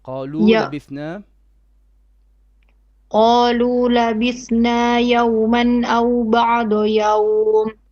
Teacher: If you pause here on يوم, not يومي.